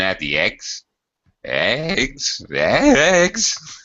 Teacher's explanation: I'm going to have to use rising intonation because that's another intonation pattern. Yes or no questions, we rise at the end.